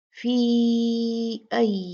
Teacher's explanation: یہ جو فی ہے اس کو ہم نے 4 کاؤنٹ کھینچنا ہے، کیونکہ فی مد اصلی تھی، اس کے بعد جب حمزہ آ گیا تو وہ مد اصلی جو تھی وہ 4 کاؤنٹ کے جو مد ہے اس میں تبدیل ہو گئی حمزہ کی وجہ سے، اور یہ پھر مد منفصل جائز بن گئی۔